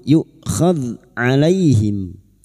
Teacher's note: Alam yukhadh, yu hamzah sukun, yukhadh alaihim. Dzal sukun bukan qalqalah, jangan dipantulkan.